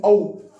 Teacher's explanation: बोले देंगे औ। ठीक है, तो कंठ से भी निकल रही है आवाज। ठीक है, और होठों की भी आवश्यकता पड़ रही है · औ और औ जो होता है वो ओष्ठ प्लस कंठ से बोले जाते हैं। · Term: कंठ ओष्ठीय